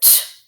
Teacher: This one's a stop sound because you can't hold it or stretch it. You make the sound and then it stops.